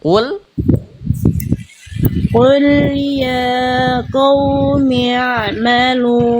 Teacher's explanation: diantar bunyi ainnya ke mim ya, jangan putus ya, agak ngalir dia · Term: ain sukun